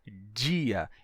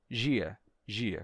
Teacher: o som do d antes de I terá ficado igual ao som do J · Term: pronúncia mais relaxada